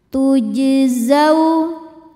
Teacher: Huruf jim sukun hukumnya qalqalah sughra karena jimnya sukun asli dan berada di tengah bacaan. Cara bacanya jim dipantulkan dengan pantulan yang kecil.